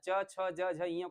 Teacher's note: च वर्ण के वर्गों को जब बोलना च, छ, ज, झ, ञ को बोलते हैं तो आपकी जीहवा ऊपर तालु से जाकर के स्पर्श करती है।